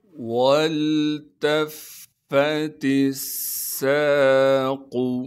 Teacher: وَالْتَفَّتِ السَّاقُ، واو کو لام سے ملائیں گے اس لیے کہ لام ساکن ہے، پھر تا کو ہم نے فا سے ملانا ہے کیونکہ فا پر تشدید ہے، تشدید ہونے کی وجہ سے تھوڑا سا ٹھہراؤ رکھیں گے، پھر فا پر زبر بھی ہے، پھر فا پر ہم نے زبر بھی پڑھنا ہے بغیر کھینچے۔